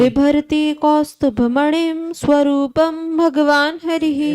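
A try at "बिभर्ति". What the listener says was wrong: ऐसे वी नहीं, अब ब होना चाहिए।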